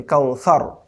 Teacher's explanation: কাল, আ'তাইনা কাল, দেন কাফ ওয়া জবর কাউ, সা জবর সা, রা জবর রা, কাউসারা। আর ওয়াকফের কারণে শেষের রটা সুকুন হয়ে যাবে